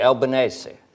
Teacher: It's a very gentle S in Italian, but you always use the vowel at the end.